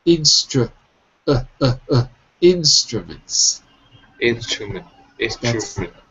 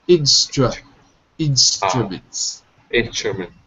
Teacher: it looks like a u but it's not pronounced like a u it's pronounced like an uh